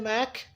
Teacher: काफ साकिन है, यहाँ पे काफ साकिन हो रहा है तो हम हम्स की आवाज़ के साथ पढ़ेंगे। मअक करके मत छोड़िएगा, मअक की आवाज़ के साथ आपने इसको यहाँ पे ख़त्म करना है।